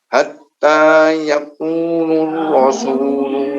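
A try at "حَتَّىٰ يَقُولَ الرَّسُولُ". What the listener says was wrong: Awas, hati-hati. Yaqula, bukan yaqulu tapi yaqula. Hatta yaqular rasul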